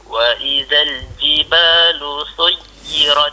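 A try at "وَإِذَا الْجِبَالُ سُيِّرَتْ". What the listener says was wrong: Ha, bolehlah sikit tu. Ya, tapi jangan jangan dikembang ya pangkal lidah. Ha, jangan dikembang lidah tu, kalau kalau kembang dia jadi huruf sad ya.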